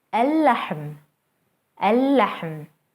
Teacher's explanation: Notice how the sun letter is doubled and how the L sound is lost.